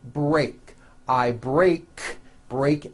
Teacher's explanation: break ends with an unvoiced K sound there's no voicing on that K